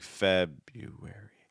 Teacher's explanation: You're stressed on that first syllable, so all the other syllables are just going to be moving down.